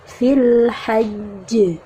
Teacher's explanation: tasydidkan dulu, ditekan dulu, jadi penuhi dulu tasydidnya, baru kemudian dipantulkan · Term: huruf qalqalah